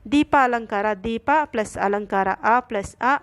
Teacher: ದೀಪ ಅನ್ನೋದು ರಸ್ವ ಸ್ವರ ಎರಡು ರಸ್ವ ಸ್ವರಗಳಿಗೆ ದೀರ್ಘ ಸ್ವರ ಆದೇಶವಾಗಿ ಬಂದಿದೆ ಒಂದೇ ಜಾತಿಯ ಅಕ್ಷರಗಳು ಪರಸ್ಪರ ಪರವಾದಾಗ ಅದೇ ಅಕ್ಷರ ದೀರ್ಘವಾದರೆ ಅದು ಸವರ್ಣ ದೀರ್ಘ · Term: ಸವರ್ಣ ದೀರ್ಘ ಸಂಧಿ